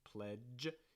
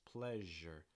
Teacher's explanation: voiced but for the sound what you're going to notice is you're not going to press your tongue as hard against the top of your mouth it's not really the tip of your tongue it's going to be more in the middle of your tongue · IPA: ʒ